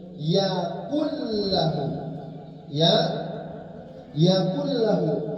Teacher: Nun sukunnya masuk huruf lam secara tam, secara sempurna. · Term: idgham tam